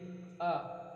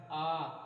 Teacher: जैसे देखिए अ हमारा कंठ आ कंठ से है, और जो क देखिए जिह्वा ने किसी भी अवयव को नहीं टच किया, ये सीधे सीधे सिर्फ हमारे कंठ से इनका उच्चारण हुआ